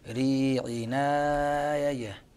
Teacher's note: ينقل حركة الهمزة إلى الساكن الواقع قبله على نون التنوين